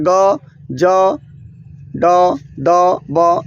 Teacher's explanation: इसको बोलने में कम वायु निकलता है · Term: अल्पप्राण